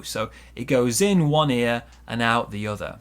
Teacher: we link the n and the o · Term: linking